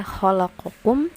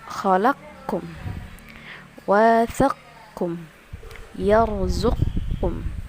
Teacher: Jadi dimasukkan qafnya ke dalam kaf. Jadi bacanya adalah kaf. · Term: idgham